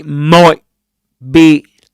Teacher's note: So when one sound becomes similar to the following, or actually, so you might say he might be, you could produce here a glottal stop and say might be